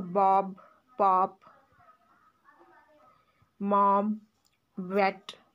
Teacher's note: These are the bilabial consonants made with both lips.